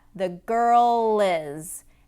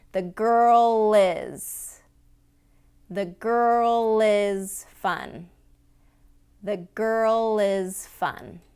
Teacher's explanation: when it's followed by a vowel sound, the girl is. We have to jump off that roof of the mouth to get into that vowel sound.